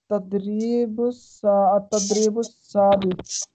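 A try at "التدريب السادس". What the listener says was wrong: अतद्रीबु सादिसु तामर्बुता नहीं है।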